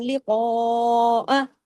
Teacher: قاف کو ہیوی بھی کرنا ہے، قاف کو ایک مد لگی ہوئی کھینچنا بھی ہے